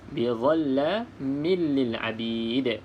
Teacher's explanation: kita baca dengan idgham, iaitu masuk ke dalam huruf lam, iaitu huruf yang bersabdu